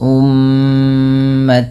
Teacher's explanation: Kemudian pada lafal tawa di sini ada tan, yaitu ta yang berharakat tanwin. Karena bertemu dengan huruf waw, maka suara tanwinnya dimasukkan ke huruf waw. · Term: idgham